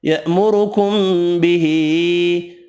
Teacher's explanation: रॉ पेश की वजह से पुर पढ़ेंगे, मीम का इख्फ़ा होगा, छोटी मद तीन अलिफ की मिक़दार में खींच कर पढ़ेंगे।